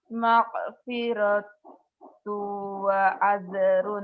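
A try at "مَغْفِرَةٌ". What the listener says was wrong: g-nya pecah tapi ya. Maghfiratu.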